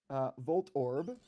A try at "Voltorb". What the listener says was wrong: Volt Orb? Volt Orb doesn't change that it's a Volt Orb. you're putting emphasis on the second syllable, even though they're still separate syllables.